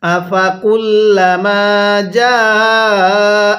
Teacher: আফা কুল্লামা জাআকুম, জিমের মধ্যে আমরা 4 আলিফ টান দিব